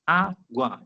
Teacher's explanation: Duas vogais na mesma sílaba.